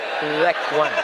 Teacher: Za, bukan za, pakai zal. Letakkan ujung lidah di gigi atas.